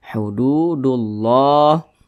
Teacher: dengan Idgham Syamsiyah karena cara membaca huruf lamnya ini dia diidghamkan Jadi huruf lamnya ini dia tidak dibaca yang dibaca huruf yang di depannya ini begitu langsung masuk di huruf yang di depannya